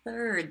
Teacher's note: That is all air, all breath coming through.